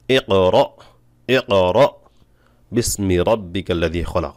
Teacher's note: এ হরফ উচ্চারণের সময় তার মাখরাজে জোরে ধাক্কা লাগার কারণে শ্বাস বন্ধ হয়ে যাবে এবং আওয়াজ বড় হবে। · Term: জিহির